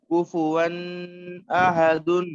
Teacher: کفوا احد واؤ نہیں، ناک میں نہیں لے جانا ہے آواز. تنوین کے بعد حمزہ ہے.